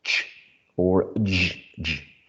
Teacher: We may produce a partial block and then a gradual release, and when we produce an affricate sound like ch or j, j.